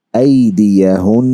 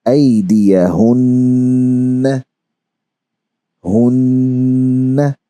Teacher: this nasalized sound, hun, this is called Ghunna. And we stretch it equal to almost a standing harakat.